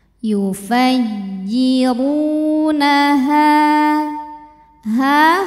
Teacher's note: sebab ada Alif sebelumnya berharakat fathah cara bacanya panjang h-nya dua harakat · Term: Mad thii ziri